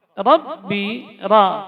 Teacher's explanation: ujung lidah, jadi bagian atasnya menempel pada gusi atas, dua gigi seri atas